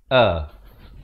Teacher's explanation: Hamzah baris atas, makhrajnya hamzah di bawah pangkal kerongkong a. Kemudian ain baris dhammah, makhrajnya di pertengahan kerongkong dan dibaca 2 harakat.